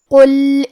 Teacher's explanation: کلمت قل میں یہاں لام ساکن ہے لہذا ہمیں حرف اللام کو ظاہر کرنا ہے